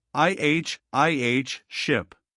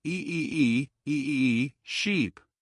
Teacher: Notice the difference in your mouth shape. More relaxed and short for ship. More spread and stretched for sheep.